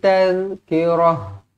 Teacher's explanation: ta marbutah kalau berhenti dia akan jadi huruf ha yang bertanda mati.